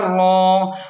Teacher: را پر کھڑا زبر ہے تو اسے موٹا پڑھیں اور ایک الف کے برابر کھینچیں